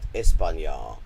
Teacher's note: See, it has to be the version with the 2 A's, the long A on the end